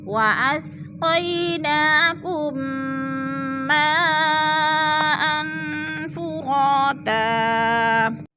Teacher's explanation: میم ساکن کے بعد میم مشدد ہے تو ادھر ادغام شفی ہو رہا ہے، سختی سے جما کر پڑھیں گے اور ادغام کریں گے.